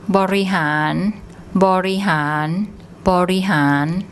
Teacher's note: We have the long R again, long R vowel, and rora as a final consonant, which makes an N sound